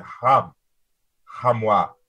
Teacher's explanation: a guttural H well all ages are kind of guttural but this is a real hard guttural H